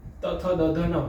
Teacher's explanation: તથ દધ ન પૂરેપૂરા દાંતને અડે છે જીભ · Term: સ્પર્શ વર્ણો